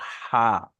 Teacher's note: এটা হা, বড় হা, জি। মানে আওয়াজটা মুখের গলা থেকে বেরিয়ে আসবে।